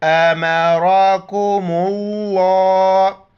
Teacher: را کو موٹا کر کے پڑھیں گے